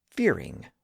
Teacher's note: notice that the stress is reversed in that word fearing with the stress on the first syllable not the second fearing not fearing but that's the opposite of what we would